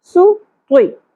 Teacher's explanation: سین باریک ہوگا, سیٹی کی آواز کلیئر ہونی چاہیے